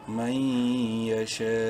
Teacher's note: نون ساکن کے بعد یا حروف یرملون میں سے ہے، ادغام مع الغنہ ہوگا